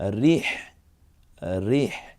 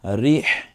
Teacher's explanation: এরপর রকে রস্বীকার দিয়ে রি, তারপরে আছে হ, যেটা কণ্ঠনালীতে চাপ দিয়ে উচ্চারণ করব।